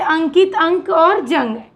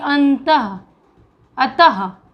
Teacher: अनुस्वार का उच्चारण नाक से होता है और विसर्ग का उच्चारण कंठ से होता है